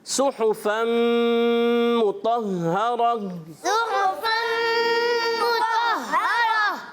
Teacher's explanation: اس میں طا کی ادائیگی پر رہنا چاہیے, یعنی تا اور طا اس میں واضح فرق ہو · اور جب یہاں ملائیں گے وہی قاعدہ جو پیچھے گزرا, ادغام کریں گے اور ادغام مع الغنہ, غننے کے ساتھ